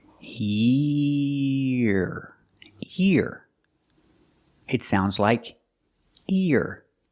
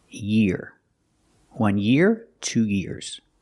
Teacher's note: link the sound from the e to the r